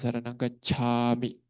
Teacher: nah itu ca-nya juga harus jelas dan mengeluarkan angin